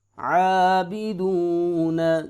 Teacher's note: با زیر بی، عابی، دال پیشوا دو، عابدو، نون زبرنا، عابدون، واو ساکن ہے، واو مدہ ہے لہٰذا یہاں پہ 1 الف کے برابر اس کو لمبا کریں گے